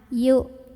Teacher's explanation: makin kita tekan ke makhraj huruf hamzah ini, yaitu ke pangkal tenggorokan, makin gak ada bunyinya ya, makin tertahan. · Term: hamzah sukun